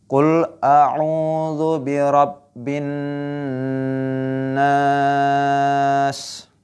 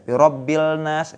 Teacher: Bin gunnah ya. Dibaca mendengung bin nas.